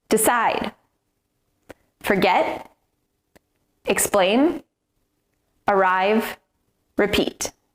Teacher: Can you hear the stress? The stress is on the second syllable.